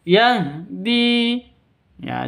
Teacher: Ha itu keluarnya dari bawah tenggorokan atau tenggorokan paling ba paling bawah.